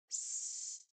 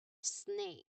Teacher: Now, to make this um particular sound S, the hissing sound, the tip of your tongue must come very close to the gum ridge. But do not touch it. Okay? Just you just create a narrow channel, a very little channel for the air down the center of your tongue.